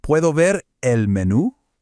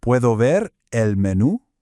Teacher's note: Make sure you really emphasize that accented U at the very end of menú.